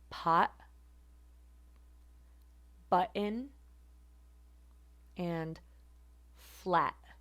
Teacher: is released at the level of the glottis instead of at the alveolar Ridge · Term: glottal stop